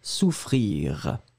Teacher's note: le r final il n'est jamais très très fort